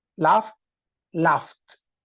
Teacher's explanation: the sound g h usually in English is like the consonant F so it is unvoiced or voiceless